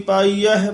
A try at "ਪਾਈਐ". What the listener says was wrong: ਪਾਈਅਹਿ ਨਹੀਂ ਹੈ ਪਾਈਐ ਸਿੱਧਾ ਹੀ ਹੈ ਹਾਹ ਨਹੀਂ ਹੈ